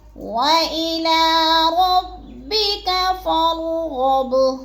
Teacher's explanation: فا کو بھی را کے ساتھ ملا کے پڑھنا ہے اور را کو پر کر کے پڑھنا ہے۔ اور غب، غین بھی پورا پر پڑھا جائے گا اور با کو ہم نے تھوڑا سا ہلا کے پڑھنا ہے کیونکہ حروف قلقلہ میں سے ہے۔